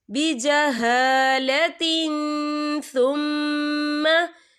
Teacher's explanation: ये देखिए बिजहालतिन, ता के नीचे तनवीन है, तनवीन के बाद जो है सा आ रहा है और सा जो है इफ़ा का वर्ड है, तो हम यहाँ इफ़ा करेंगे, तनवीन की आवाज को नाक में छुपाएंगे।